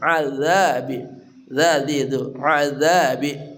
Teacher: zal dari ujung lidah bersama ujung gigi seri atas